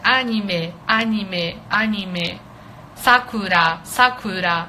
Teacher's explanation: você coloca tudo alto na verdade